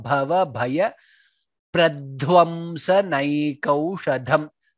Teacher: Bhava bhaya, both bhas are mahaprana.